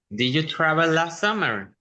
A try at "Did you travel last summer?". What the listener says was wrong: Muy bien.